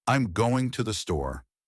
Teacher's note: The words that carry meaning are going and store. The rest I'm tothe the are reduced and said quickly. So the rhythm sounds like I'm going to the store. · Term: sentence stress and rhythm